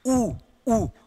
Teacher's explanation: उ या उ जब बोलते हैं तो हमारी होठों की आकृति चेंज हो जाती है, वृत्ताकार में आ जाते हैं, इसीलिए को तो इसको ओष्ठ वर्ण कहते हैं।